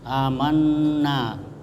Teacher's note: amanna itu nun bertasdid disebut gunnah. Gunnah itu mendengung, dibaca amanna.